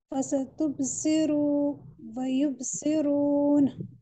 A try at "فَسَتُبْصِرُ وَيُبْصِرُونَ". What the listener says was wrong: فَسَتُبْصِرُ وَيُبْصِرُونَ. Don't stretch the first ra of تُبْصِرُ.